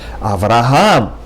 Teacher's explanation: In Hebrew, you would pronounce it with the accent on the last syllable